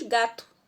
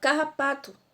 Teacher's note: Veja que quando nós pronunciamos a palavra, né, ela sai aí com o som da vogal U lá no final. Mas nós escrevemos com o, certo?